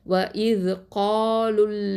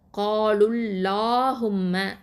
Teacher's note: தஃப்ஹீமாக தான் ஓதுவோம். அதாவது காலுல்லாஹும்ம அப்படின்னு வாயை நல்லா ஓப்பன் பண்ணணும்.